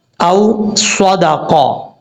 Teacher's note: واو ساکن سے پہلے کیونکہ حمزہ آ رہا ہے اس لیے اس کو لمبا نہیں کریں گے، شارٹ کٹ کر پڑھیں گے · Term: واو لین